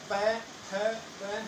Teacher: प फ हमारे ओठों के अंदर हवा टकराती है और फिर बाहर निकलती है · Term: ओष्ठ